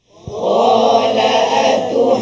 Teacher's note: ada sabdu atas Nun kena ghunah pula dipanjangkan ghunnahnya